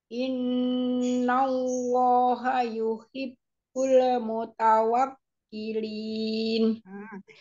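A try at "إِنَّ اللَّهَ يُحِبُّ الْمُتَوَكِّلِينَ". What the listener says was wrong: Dalam sukunnya jangan mantul. Inna Allaha yuhibbul muta bulmu. Jadi jangan bulemu. Makanya lam jangan cepat-cepat berganti, jangan langsung dilepas.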